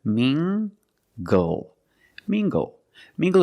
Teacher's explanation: using the nasal sound and the hard G together